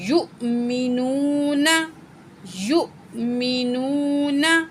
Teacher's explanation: حمزہ کو ہم جھٹکے کے ساتھ پڑھیں گے